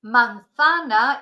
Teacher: in Spain The Zed is a th sound